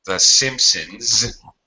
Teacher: The Simpsons with a z sound because n is voiced